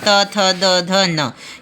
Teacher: त वाले वर्ग जो है ना, सब दांत में लगेंगे आपके जीभ जो है